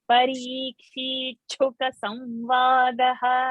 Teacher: So there is a Sandhi, Parikshit Sta and Shuka's Sh. Ta and a Sh, when they join, we get that Ch.